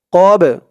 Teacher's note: এই বা টা কলকলার হরফ ধাক্কা দিয়ে পড়তে হবে কলকলার হরফ পাঁচটি কফ ত বা জিম দাল এই পাঁচ হরফে